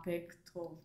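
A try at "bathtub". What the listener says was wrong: 베스트 톱. TH 쓰니까 혀를 살짝 물어야지. Bath, top, TUB, top, bathtop, bathtop, bathtop,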